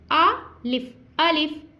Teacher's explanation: अलिफ मुंह के हाली हिस्से से अदा होता है। देखें देखें, आ हमारा मुंह खुल गया, आ और लिफ, लिफ में क्या होगा कि हमारे ऊपर वाले दांत निचले होंठ से जाके लगेंगे, तो वहीं पे हमने अपनी आवाज़ को स्टॉप कर देना है।